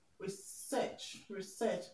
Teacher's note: So the word research is a verb. So we're going to stress the second syllable.